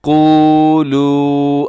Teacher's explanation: اس آیت کریمہ کے اندر سب سے پہلے دیکھیے گا لفظ ہے قولو، یہاں پر آپ نے مد کرنی ہے اور جو پہلا حرف ہے قوف اسے موٹا رکھیے گا، اسے کولو نہیں پڑھنا آپ نے بلکہ قو یہ واو مدہ ہے، تھوڑا لمبا بھی کیجیے گا